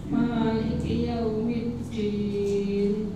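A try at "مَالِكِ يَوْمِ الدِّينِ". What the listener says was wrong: nah, ini ma-nya tipiskan bukan ma. Terus din bukan din nggih. Cobi, malih.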